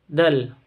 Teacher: dal sukun ini ujung lidah dan gusi atas